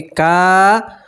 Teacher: واو مدہ میں بھی آپ ایک الف کے برابر کھینچیں گے